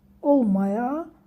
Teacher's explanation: Vurğu son hecada deyil. Vurğu A'nın üzərindədir. İkinci hecanın üzərindədir.